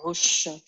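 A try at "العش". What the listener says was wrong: C'est un shin, c'est pas un sin.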